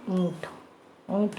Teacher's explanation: इसका उच्चारण करते समय हवा मुंह के साथ साथ नासिका से भी निकलती है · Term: अनुनासिक